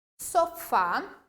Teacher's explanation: fica bem evidente a minha sílaba tônica Fá